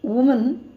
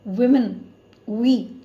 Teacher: நிறைய பேர் வந்து ஒரே லெட்டர் தானே இருக்குது, WO தானே இருக்குது, சிங்குலர் லைன் WO தான் இருக்குது, ப்ளூரல் லைன் WO தானே இருக்குதுன்னு சொல்லி ரெண்டையும் ஒரே மாதிரி ப்ரொனவுன்ஸ் பண்ணுறாங்க. பட் அந்த ப்ளூரலில் இருக்கிற WOவை நம்ம WI இருக்கிற மாதிரி ப்ரொனவுன்ஸ் பண்ணணும். ஸோ சிங்குலரில் உமன், ப்ளூரலில் விமன், வி. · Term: vowel shift